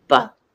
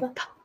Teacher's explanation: they can feel that vibration for the BBB yeah and PP you don't feel the vibration with the p sound